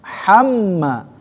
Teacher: Itu mim bertasdid ya. Gunnah musyaddadah. Ham dengung ya. Tahan 2 sampai 3 ya. 3 ketukan lah biar lebih sempurna.